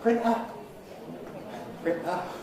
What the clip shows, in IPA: ˈprɪnʔə